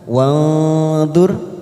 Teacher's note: Nun sukun bertemu dha ikfa ausat kita samarkan 3 ketuk.